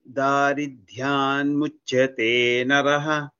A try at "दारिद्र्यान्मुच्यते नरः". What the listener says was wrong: All are alpa pranas. Both das alpa pranas only. Daridrya. Daridryan muchyate naraha. In this line, no mahapranas, all are alpapranas.